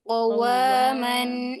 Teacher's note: Qawaman, wawunya kurang manyun sedikit.